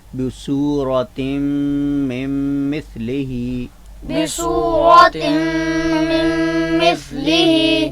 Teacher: تنوین کے نون کو یا نون ساکن کو ہم میم میں مدغم کر دیتے ہیں غنہ کے ساتھ